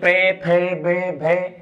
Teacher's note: स्पर्श व्यंजन की अगर बात करें तो स्पर्श व्यंजन में आ जाएगा यहां पर पे वर्ग, यानी पे फे बे भे और मैंने आपको बताया था कि पे वर्ग के वर्णों का जब उच्चारण करते हैं तो होठ आपस में स्पर्श करते हैं